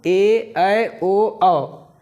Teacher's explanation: इसके उच्चारण में जो है ह्रस्व स्वरों की तुलना में 2 गुना समय लगता है दीर्घ स्वरों के उच्चारण में